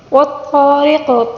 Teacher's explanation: طا کو پر پڑھیں گے، را کو باریک پڑھیں گے کیونکہ را کے نیچے زیر ہے اور قاف کے نیچے جو زیر ہے وقف کے دوران زیر کو ساکن کے ساتھ تبدیل کر کے پڑھنا ہوگا، ٹھیک ہے؟